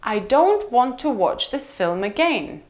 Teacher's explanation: so want in this case is not going to be stressed